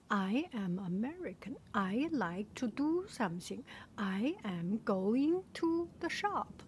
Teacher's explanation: their intonation is up and down and up and down